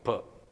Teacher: is the example of the sound per when you produce that there are two articulators one is the lower lip and the other one is the upper lip they come together blocking the Airstream then immediately all of a sudden the block is released than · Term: plosive